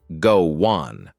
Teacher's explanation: The W sound sneaks in to make it smoother. This is what we mean by linking sounds in English.